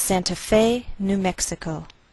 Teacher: We place the most stress on fe. That's our primary stress.